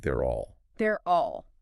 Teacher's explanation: You have they're reducing to there, and then will reducing to all. Putting the R sound from the right next to the all sound from all often makes that final vowel sound open up a bit closer to an all sound.